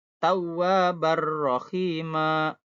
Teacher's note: An-nya jadi ar gitu ya.